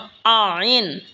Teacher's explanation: আইন হলকের মধ্যখান হইতে উচ্চারণ হবে আইন। এই হা যেখান থেকে উচ্চারণ হয়েছে সেখান থেকেই আইনও উচ্চারণ হবে।